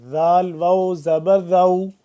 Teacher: जबान को दो दांतों को दरमियान थोड़ा सा बाहर की तरफ निकालेंगे